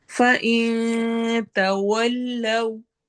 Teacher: फ़इन तवल्लव, होंठ गोल होंगे एंड पे, नून पर हम इख्फा करेंगे, तवल्लव में हम होंठ गोल करते हुए वाव लीन करेंगे